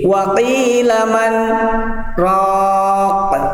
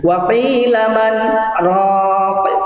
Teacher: Jadi diam sebentar tanpa nafas tapi tetap melanjutkan. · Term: sakat